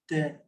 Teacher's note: ta ni dia ada satu sifat hamas. Hamas ni ada macam ada keluar sikit.